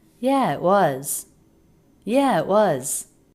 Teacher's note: The word it said very quickly. stop T and then the word was not reduced here because it's at the end of a sentence.